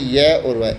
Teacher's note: इनके उच्चारण में स्वरों से मिलता जुलता प्रयत्न करना पड़ता है, इसलिए इन्हें अर्धस्वर भी कहा जाता है।